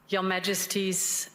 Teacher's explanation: Right, she's not pronouncing R sounds.